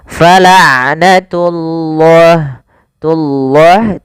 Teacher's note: pada lafal ain sifat bainiyah tidak terlalu ditahan suara ainnya dan tidak terlalu dilepaskan.